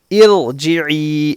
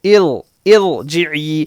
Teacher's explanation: رائے ساکنہ ہو، رائے ساکنہ سے پہلے زیر عارضی ہو، زیر عارضی ہو تو رائے ساکنہ کو پر پڑھنے کے بجائے، باریک پڑھنے کے بجائے پر پڑھیں گے، موٹا